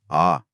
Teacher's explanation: तीसरा प्रकार सबसे आसान है विवृत, जिसमें मुंह पूरा खुला रहता है। ऐसा केवल एक ही स्वर है आ। जब डॉक्टर गले की जांच करता है तो कहता है ना, मुंह खोलो और बोलो आ।